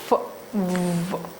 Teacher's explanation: so air is released with the friction continuously